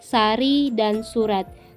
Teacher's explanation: huruf S yang bercirikan mati, oral, apikoalveolar, dan frikatif